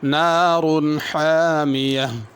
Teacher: پہلی ہا بڑی ہے، ہا پڑھنی ہے، اور حامیہ آخر میں جو ہا ہے وہ چھوٹی ہے